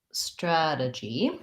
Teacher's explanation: so for the word strategy we have first syllable stress strategy this t becomes a flap so it sounds like a d and the vowel in strategy is our vowel a like black